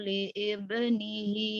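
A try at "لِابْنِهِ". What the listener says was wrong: li'i, mana li'i? Libnih ini namanya hamzah wasal, i-nya nggak ada. Libnihi, heeh. Diwasal ya.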